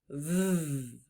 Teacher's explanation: V is one of our consonants and V spells v o I feel my lips buzzing when I make that sound can you say V and you feel almost like a motor